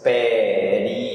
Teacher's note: Em Portugal ela é paroxítona, não confunda, mas no Brasil ela é proparoxítona, tem 4 sílabas. Período. O ri e o ó se separam no português brasileiro.